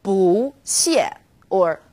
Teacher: bu when used on its own bu is fourth tone bu when bu is used before another fourth tone it becomes second tone